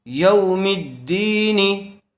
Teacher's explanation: زیر والے حرف کے بعد یا ساکن آئی ہوئی ہے، اس لیے یہاں پر یا مدہ ہوگا، اس کو تھوڑا کھینچ کر پڑھیں گے